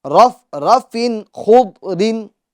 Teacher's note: فا کی تنوین میں اظہار ہوگا، کیونکہ تنوین کے بعد حروف حلقی میں سے خا آ رہا ہے